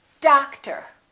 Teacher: one do we say dog tor or daktar no we don't we stress the first syllable we reduce the second syllable